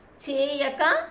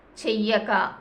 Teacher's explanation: మొదటి ఉన్నటువంటి దీర్ఘం హ్రస్వం అయింది తర్వాత ఉన్నటువంటి యకారానికి దిత్వం రావటం అనేది జరిగింది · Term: ద్విత్వం